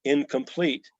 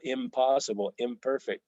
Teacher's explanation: it changes to an M when it's next to another bilabial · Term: assimilate